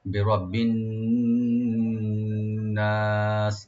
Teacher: নুন গুন্না করতে হবে এবং এক আলিফ টানতে হবে, বিরাব্বিন নাস, এভাবে।